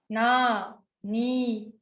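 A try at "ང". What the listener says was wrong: Don't touch your tongue. Nga.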